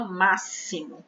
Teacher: A escrita é com X, mas o som que nós escutamos e produzimos é o S. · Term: som é de S